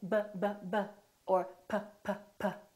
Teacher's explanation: I'm putting my lips together both my upper lip and my lower lip are working B so when I say probably we have a PBB probably